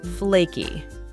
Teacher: we stress the word on the first syllable